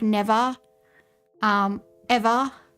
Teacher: We don't pronounce R at all. We pronounce R as like AH basically.